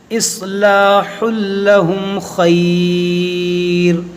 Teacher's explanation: اصلاح لہم خیر، یہاں پر مد لین عارض ہوگا کیونکہ یہاں پر وقف ہے، رکیں گے تو مد لین عارض کریں گے